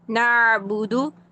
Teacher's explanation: حلق میں جب آپ نے آئین ساکن کو ادا کرنا ہے تو درمیانی حصے میں آواز کو لے کر جانا ہے، وہیں پر آئین ساکن ادا کرنا، اوپر نیچے آواز کو اپ ڈاؤن نہیں کرنا ہے، نہ یہ نہیں کرنا ہے، نعبدو، نہ یہ آواز یہیں پر.